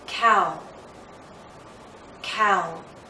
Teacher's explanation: This time we're moving from around here to here. So our lips are moving in to a circle, not a tight one as in ooh, but approaching that.